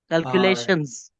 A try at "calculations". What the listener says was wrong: Now I can hear the pluralist. Thank you so much.